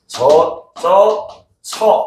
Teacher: 축약의 결과로 나타나는 발음 저 처 얘네들은 이중모음으로 발음하지 않고 단모음인 저 처 그냥 요렇게 발음을 합니다.